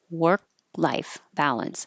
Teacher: Work life, you're not going to hear the K.